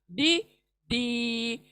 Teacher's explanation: सामने नहीं लगेगी जबान, साइड किनारों को लगेगी, दाढ़ों को